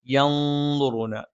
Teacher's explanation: നൂനിനെ അവ്യക്തമാക്കി ഉച്ചരിച്ചുകൊണ്ട് മണിക്കണം. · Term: ഇഖ്ഫ